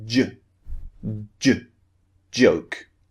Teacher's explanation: So your tongue first of all is pushing up and blocking air. Okay? Then suddenly your tongue is pulling down and releasing the burst of air.